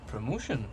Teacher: the accent is in the second syllable, corresponding to mo